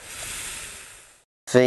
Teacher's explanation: V is a voice labio Dental fricative